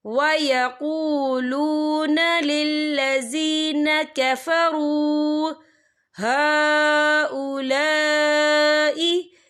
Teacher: واو ساکن ہے، واو ساکن سے پہلے پیش ہے، تو ہم اسے 2 یا 3 حرکت کے برابر کھینچ کے پڑھیں گے